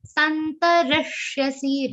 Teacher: Re is a short sound, so the aghat of sha is very prominent on that. And this charan is ending with a short sound.